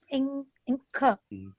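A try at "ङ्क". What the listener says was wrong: Again, Inca you are saying. Where is E? Is E is there before the conjunct consonant? Then we can't say that. Nakara plus kakara plus a.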